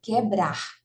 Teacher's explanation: Na palavra quebrar, não existe encontro vocálico, porque a gente não pronuncia o U